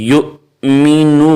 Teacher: حمزہ کے اوپر جزم آ جائے تو اس کو پڑھتے وقت جھٹکا دیں گے